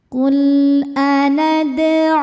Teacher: Sebab ada wau sukun sebelumnya berharakat dommah. Cara bacanya huruf ain dipanjangkan dua harakat. · Lam sukun ini dinamakan dengan lam mutlak. Ada lam sukun, depannya bukan hamzah wasal ya. Kemudian tidak menghadapi lam atau ro. Maka lam ini kita baca dengan jelas. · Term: mad thobi'i zohiri